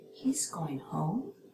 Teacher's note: a rising pitch turns a statement into a yes or no question